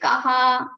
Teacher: You have to prolong the visarga sound. You have to prolong the ka. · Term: dirgha